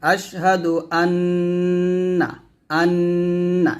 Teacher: এখানে অবশ্যই গুন্না করতে হবে